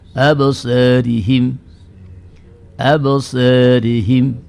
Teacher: Imalah sughra itu adalah bunyi yang cenderung kepada harakat fathah. Bunyi pertengahan antara fathah dengan kasrah tetapi lebih cenderung kepada harakat fathahnya. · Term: taklil